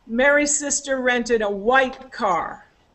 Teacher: so the focus is on the color